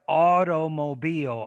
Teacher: but I use the flap instead of the T